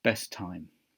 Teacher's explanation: Best ends with a T, and time starts with a T, so they share the linking sound